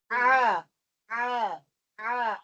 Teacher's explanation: عین جو ہے حلق کے درمیان والے حصے سے